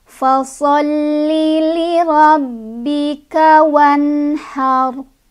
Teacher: Fasalli agak ditekan di lam karena ada tasydid ya.